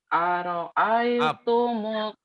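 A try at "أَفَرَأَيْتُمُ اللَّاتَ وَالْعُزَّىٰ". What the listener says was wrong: Afa, bukan aro'aitum. Afara'aitumul Lata wal Uzza.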